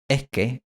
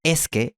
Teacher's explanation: En Madrid se suele escuchar eh que en vez de es que en el habla informal. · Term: aspiración